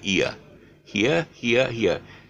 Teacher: it it slides from e to uh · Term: diphthong